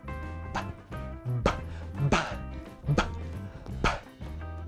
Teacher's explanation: It's really short, but it's explosive and dynamic.